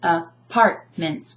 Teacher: I'm emphasizing the second syllable because we don't say apartments, and we don't say apartments, right?